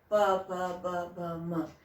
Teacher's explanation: इनका उच्चारण स्थान क्या है, ओष्ठ है, ओष्ठज